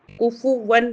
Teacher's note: کیونکہ اس کے بعد حمزہ آ رہا ہے، اظہار حلقی ہوگا، غنہ اور اخفا نہیں ہوگا